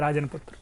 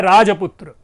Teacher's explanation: मध्य के ना का लोप है। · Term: मध्य व्यंजन का लोप